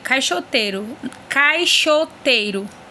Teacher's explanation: Se percebemos, o A sai apenas pela boca, né? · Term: ditongo oral